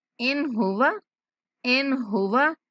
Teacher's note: ان ہوا، واو کو لمبا نہیں کرنا